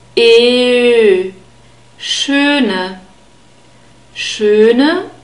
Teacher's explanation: bird sound so its a mix of E and O and the trick is you say e with rounded lips but leave the tongue where it is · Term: the bird sound, Ö sound